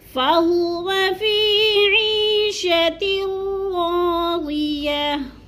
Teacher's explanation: 2 زیر کی تنوین کو وقف کی صورت میں جزم میں بدل کر پڑھیں گے، یعنی ساکن کر دیں گے